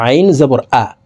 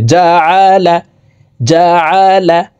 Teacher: আইনের উচ্চারণ হলকের মধ্যখান থেকে উচ্চারণ করতে হবে